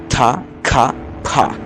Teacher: Y además se pueden aspirar como ta, ka, pa, por ejemplo.